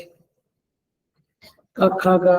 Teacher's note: क ख ग वगैरह कंठ्य है